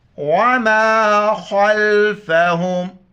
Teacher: خا کو موٹا کر کے لام کے ساتھ ملائیں گے ، خا لام زبر خل، فا زبر فا، ہا میم پیش